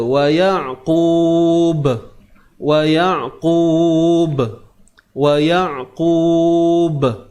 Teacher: Bila kita nak membunyikan qalqalah ini, jangan biarkan bunyi hamzah di hujungnya. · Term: qalqalah kubra